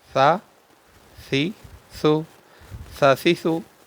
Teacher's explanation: زال کا اور ثا کا ایک ہی مخرج ہے۔ زبان کی نوک اور اوپر کے دانتوں کے اندرونی کنارے سے یہ دونوں حروف ادا ہوتے ہیں اور اس کو بھی بغیر سیٹی کے پڑھنا ہے